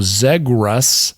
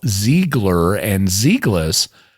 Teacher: you can hear how Zegrus has an R sound, while Ziegler and Zegless have an L sound